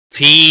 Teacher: فی مد منفصل ہے، 3 الف کے برابر کھینچ کر پڑھیں گے